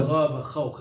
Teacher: أدنى الحلق الغين والخاء